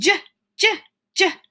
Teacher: See how each one of those sounds stops instead of a continuous sound like ah that can go on until the end of our breath? So J is a consonant. It's voiced and it's stopping.